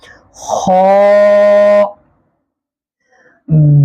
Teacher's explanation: गले का वो हिस्सा जो मुंह की तरफ है, ऊपर का हिस्सा सबसे, वहां से अदा करेंगे, पूरा मुंह उसको मोटा पढ़ेंगे।